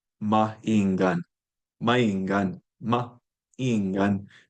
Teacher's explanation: the glottal stop interrupts two side-by-side vowels